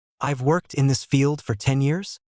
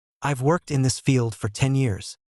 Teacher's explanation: The first sentence rises at the end. The second sentence settles. That rising pattern is often called uptalk.